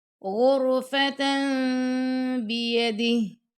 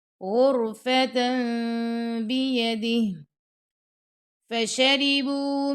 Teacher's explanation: تا 2 زبر تن کے بعد آ جاتا ہے با، تو وہاں پہ ہم کریں گے اقلاب، یعنی نون کی آواز کو میم میں بدلنا